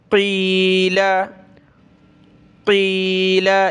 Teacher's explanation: قاف کو موٹا کر کے گلے سے نکالیں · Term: بڑا قاف